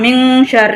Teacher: இது வந்து இஃப்பா உடைய எழுத்து அப்படின்றதுனால நம்ம மின்னு ஓதாம மிங்குன்னு ஓதுறோம்